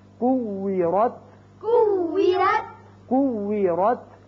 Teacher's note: را زبر تا رت، را زبر تا رت، کوی رت، کوی رت، کوی رت. کوی رت، ہونٹ گول رہے ہیں واو پر